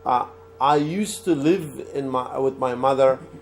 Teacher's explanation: When you say used to, you write it used to, but you do not pronounce the D. So I used to live with my mother.